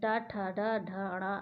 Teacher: और टा वर्ग मूर्धन से बोलते हैं, जिसमें टा, ठा, डा, ढ, ड़ा आता है।